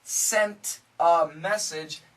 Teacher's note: the N cancels the T